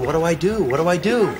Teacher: because the next word begins with a D, the T and D just become one D sound.